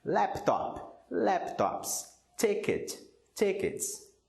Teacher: O S tem som de S quando a palavra termina com um som de consoante surda, ou seja, as cordas vocais não vibram.